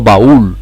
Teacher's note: lleva el golpe de voz en la vocal cerrada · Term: hiato